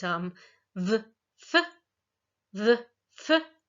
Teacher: f as in fish, those are labiodental.